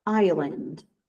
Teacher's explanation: Esse S não é pronunciado.